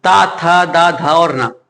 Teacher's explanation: ता वर्ग के जो होते हैं दंत से बोले जाते हैं